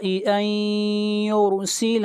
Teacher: یرسل نون ساکن کے بعد حروف یرملون میں سے یا ہے، ادغام مع الغنہ ہوگا اور را کو موٹا پڑھیں گے.